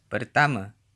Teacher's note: Final a is usually pronounced as a schwa in Malay, at least in Malaysia.